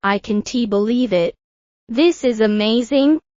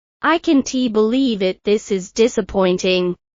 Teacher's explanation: Notice how the rising intonation shows excitement, and the falling intonation shows disappointment.